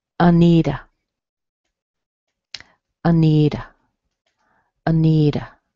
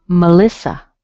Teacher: It's weak in the first syllable, strong in the middle syllable, and weak at the end. Often, what that means is you're going to hear a schwa in the beginning and a schwa at the end.